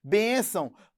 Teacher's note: Neste encontro vocálico, o A é uma vogal e o O é uma semivogal. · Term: ditongo